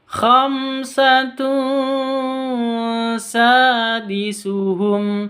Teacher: Tanwin bertemu dengan sin, bacanya samar didengungkan, ikhfa hakiki.